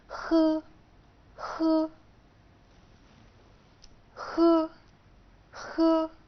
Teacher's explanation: في اللغة الصينية ينطق خ ولكنها خ مخففة